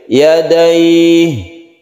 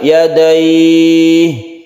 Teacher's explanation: Mad Arid lissukun artinya alid itu menghadapi huruf yang disukun maka membacanya itu bisa satu Alif ya Da'i atau dua Alif ya dayi atau tiga Alif